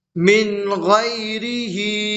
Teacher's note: من غیری، ہا کھڑی زیر ہی، اور کھڑی زیر کو تھوڑا کھینچ کر پڑھیں۔